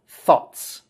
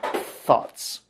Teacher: this should be pronounced with that th sound you got to get your tongue between your teeth